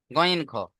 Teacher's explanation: হালাকের বা কন্ঠনালীর শেষ অংশ থেকে উচ্চারণ হয় গন